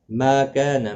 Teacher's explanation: ما کان، ما الف مدہ ہے، کا الف مدہ، دونوں کو ایک ایک الف کی مقدار کے برابر کھینچ کر پڑھیں گے